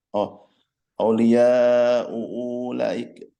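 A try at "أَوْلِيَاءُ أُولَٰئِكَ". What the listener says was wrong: Enggak, itu satu aja hamzahnya. Lanya panjang, 4 harokat. Aulia ulaik.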